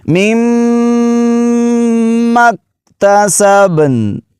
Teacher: میم جو ہے اس پر شد ہے، اس پر بھی غنہ کریں گے، دوسری میم پر بھی کریں گے